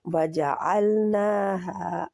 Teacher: खड़ी ज़बर भी होती, खड़ी ज़बर खड़ी ज़ेर उल्टा पेश जो होते हैं ये मद लेटर के बराबर होते हैं, यानी 2 हरकत इनको खींचा जाएगा। ना और हा दोनों 2-2 हरकत खींचे जाएंगे